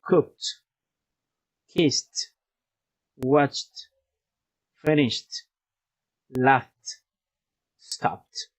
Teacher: The t sound when the verbs end in k, s, sh, ch, f, p